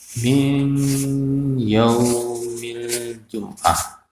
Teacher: Nun mati disambut dengan huruf ya. Baca dengan dengung. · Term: idgham